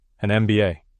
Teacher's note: MBA, when you say it letter by letter, starts with an EM sound, vowel sound.